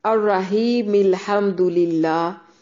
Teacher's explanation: ملانے کی صورت میں حمزۃ الوصل گر جائے گا